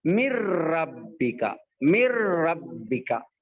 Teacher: نون بالکل ہی ختم ہو جائے گا. آگے والے حرف سے اس کو ملا کے پڑھتے. اس کو بولتے ادغام تام. · ادغام تام، ادغام بلا غنہ، یعنی یہاں پر نون کی آواز کو نہ تو ناک میں چھپا رہے نہ تو ناک میں روک رہے، بلکہ ڈائریکٹ نون کو آگے والے حرف سے ملا کے پڑھ رہے